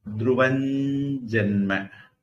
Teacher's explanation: த்ருவம் ஜென்ம, அந்த த்ருவம் அனுஸ்வாரம், ஜென்ம ஜா வந்திருக்கு. அப்ப அதனுடைய மூக்கொலி த்ருவஞ்சென்ம அப்படின்னு வரும்